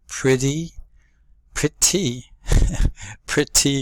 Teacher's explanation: letter T often goes to a D